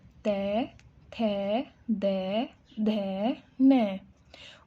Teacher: अब दंतव्य को देखिए, त, इसमें क्या हो रही है, मूर्धा दांतों पे लग रही है